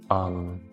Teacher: इसे बोल के आप देखिए अम तो आपके नाक से हवा निकलती है और न का उच्चारण होता है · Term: अनुस्वार